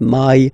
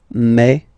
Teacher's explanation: when you combine this A and then I vowels, you get the sound E. So really open E, okay, and then you pronounce it me.